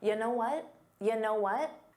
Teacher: So it sounds like one word. You know what may have been difficult to hear because it becomes unstressed.